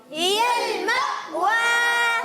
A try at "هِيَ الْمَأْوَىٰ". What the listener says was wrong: ماشاءاللہ۔ اور ایسا جھٹکا نہ ہو کہ سکتا ہو جائے، مثال کے طور پر آپ نے تھوڑا ٹھہر گئے، ہی المأوى، ایسے نہیں کرنا، فوراً ہی المأوى،